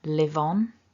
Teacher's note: Live ends with the v and the next word begins with a vowel, so we can connect that.